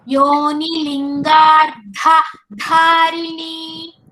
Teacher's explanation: Here lingardha dha is mahaprana. Dharini dha also mahaprana. They are side by side. We have to give stress for both dhas.